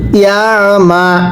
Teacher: আইনটা চাপ দিয়ে পড়বো গলার মধ্যে